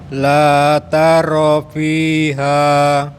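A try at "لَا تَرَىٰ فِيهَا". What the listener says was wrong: Rohnya dipanjangin dikit Bapak. La tara fiha.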